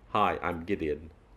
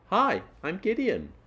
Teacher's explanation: keep the tone down, a falling tone. So, hi, I'm Gideon, not hi, I'm Gideon, a rising tone.